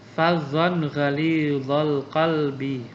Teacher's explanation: fadzon ghalidhal qalbi dibaca izhar atau jelas. Ada tanwin fathah bertemu dengan ghin. Itu namanya izhar.